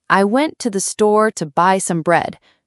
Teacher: Went, store, buy, bread are loud. I, to, the, some are almost invisible. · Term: stressed words